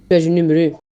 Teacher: we notice well the closed vowels of the Azores, very evident in the U sound, which they pronounce almost like a French “Û”